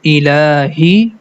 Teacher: Letter Lam, has a Fatha and then we have a small alif. So because of small alif, we have to stretch the La sound for 2 count.